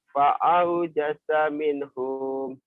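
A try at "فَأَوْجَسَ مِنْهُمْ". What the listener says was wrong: Fa'aujasa minhum. Ada yang panjang. Jangan dipanjangin. Kenapa harus dipanjangin? Kan nggak ada madnya. Nggak ada mad, jangan dipanjangin. Nggak ada bacaan panjang, nggak ada pemanjang, jangan dipanjangin. Fa'aujasa minhum.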